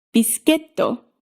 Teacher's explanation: First syllable low, rest of the syllables high, until you hit the downstep, at which point you come back down. So in biscuito, you go low, high, high, low.